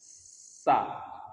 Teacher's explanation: udara yang keluar dari pertemuan ujung lidah dengan gigi seri itu di sela-selanya muncullah sa. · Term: sofir